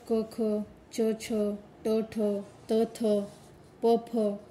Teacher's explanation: स्पर्श व्यंजने त्यामध्ये श्वास कठोर वर्ण अघोष